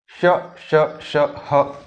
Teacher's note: श श श ह जब हम बोलते हैं तो देखिए वायु घिसती है और बाहर निकलती है, थोड़ी गर्म होती हुई